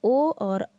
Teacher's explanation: ओ और औ का उच्चारण स्थान कंठ और ओष्ठ से होता है।